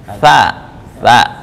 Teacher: Nah, ujung lidah dengan ujung gigi atas.